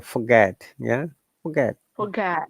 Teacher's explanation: in British English we do not pronounce R.